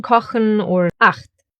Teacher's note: First one is after the vowels A, O, and U. It sounds harsher and is formed more in the throat